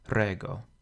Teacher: Rego has just two syllables so the accent falls on the first one